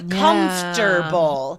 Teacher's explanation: the O in the middle just magically disappears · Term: dropping of sounds